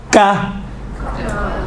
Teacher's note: سخت والی جگہ سے ٹچ ہوتی ہیں زبان کی جڑ تو کاف نکلتا ہے